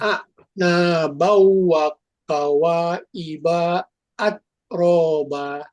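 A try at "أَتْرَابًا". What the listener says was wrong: nah ini kalau ada ta sama ka itu hams jadi kayak pecah atraba. Aturan ini ya atraba. Jadi bacanya bukan atroba, atroba.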